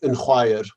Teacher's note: you're actually effectively getting an n sound even though there is no nasal mutation because hua can't undergo nasal